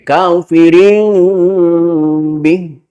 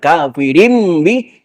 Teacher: suara mim 100% Tapi ada ikhfanya bukan kafirin tapi kafirin Bih jadi menutupnya terkatupnya bibir itu pelan pelan enggak sekaligus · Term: iqlab